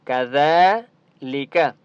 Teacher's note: ذال کے اوپر کھڑا زبر ہے، ایک الف کی مقدار کھینچ کر پڑھیں گے اور ذال کو نرمی کے ساتھ پڑھتے ہیں